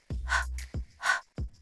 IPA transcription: h